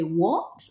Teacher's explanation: when you think about the second tone, it's almost like you're a little bit surprised when you say what, right? You go up